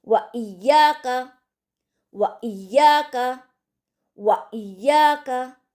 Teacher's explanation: से जाहिर कर कर पढ़ेंगे व साफ आवाज में व इयाका इयाका के हमजा को भी अच्छी तरीके से हल्का सा झटका देकर हम पढ़ेंगे